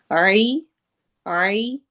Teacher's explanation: عین حروف حلقی میں سے ہے، حلق کے تھروٹ کے درمیان سے ادا ہوتا ہے۔